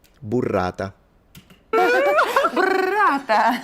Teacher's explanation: the Italian rolled R is softer, and you do it all in front of your mouth right here